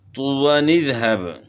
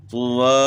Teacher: اب یہاں نون قطنی ہم نے کیوں پڑھا ہے کہ یہاں ہم نے وقف نہیں کیا، یہاں جو ہے گولدارہ جو ہے وقف، یہاں وقف موجود ہے، ہم نے وقف نہیں کیا، وصل کیا ہے، تو اس لیے نون قطنی پڑھا جا رہا ہے